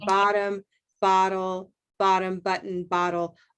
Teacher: all of those have what we call the flap t sound